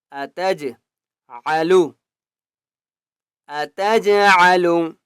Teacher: جیم کے اوپر قلقلہ کریں گے